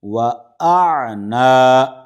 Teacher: حمزہ کو عین سے ملائیں گے تو پہلے حمزہ کی آواز نکلے گی، اس کے بعد میں عین ہے۔ عام طور سے یہاں پر غلطی ہو جاتی ہے کہ حمزہ کے بعد میں عین نکالنے کے بجائے پہلے عین نکل جاتا ہے، پھر اس کے بعد میں حمزہ ادا ہوتا ہے۔